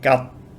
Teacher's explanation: there's no expulsion of air on the final consonant, it's unreleased